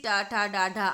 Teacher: तो टा वर्ग का उच्चारण स्थान मूर्धा है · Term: मूर्धन्य